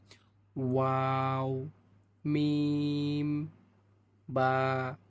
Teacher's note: দুই ঠোট হইতে তিনটি হরফ উচ্চারিত হয়।